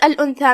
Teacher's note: ثا حروف الاخفاء میں سے ہے، تو ہم نون کو بغیر ظاہر کیے ہوئے لیکن غنہ کے ساتھ یہ حکم کو ادا کریں گے